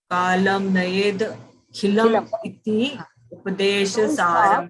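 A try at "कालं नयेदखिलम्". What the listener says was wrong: It should be continuous. Kalam nayedakhilam.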